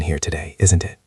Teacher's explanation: Notice how your voice goes down at the end on isn't it. This shows you are making a comment, not asking a serious question.